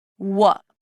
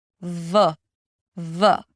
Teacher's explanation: To make the w sound, you just round the lips and there is no contact. Your teeth are not involved.